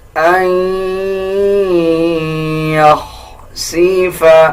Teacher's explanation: نون کے اوپر جزم آ جائے اس کے بعد یا کے اوپر شد آ جائے تب بھی ہم ناک سے آواز نکالتے ہیں یعنی غنہ کریں گے. · اکثر لوگ نون کی آواز کو ایڈ کرتے ہیں. نون کی آواز کو ایڈ نہیں کرنا، بلکہ اس میں ناک سے آواز لے کے جانی ہے یعنی غنہ کرنا ہے